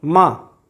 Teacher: दोनों होंठ आपस में स्पर्श कर रहे हैं, मिल रहे हैं, मतलब इसका उच्चारण स्थान ओष्ठ है।